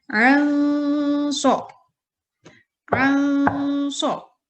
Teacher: Terdengar 2 ketukan, tidak boleh anso, tapi anso. Samar antara suara nun sukun dengan huruf shad. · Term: ikhfa